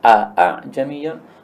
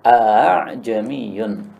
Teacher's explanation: A'jamiyun ini boleh dibaca dengan tahqiq, a'jamiyun, boleh juga dibaca dengan tashil, a'jamiyun.